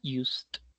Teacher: Ese sonido de S no genera vibración, ¿no? Por eso decimos used.